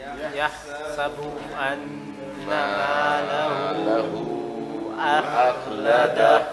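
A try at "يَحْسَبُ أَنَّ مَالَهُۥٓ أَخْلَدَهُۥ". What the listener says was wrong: 4. None of you went 4. Everybody went 2 and got lazy. There's a gunna.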